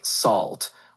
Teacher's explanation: The word salt is pronounced like salt, with a soft S sound at the beginning and rhyming with fault. The vowel sound is like the A in call.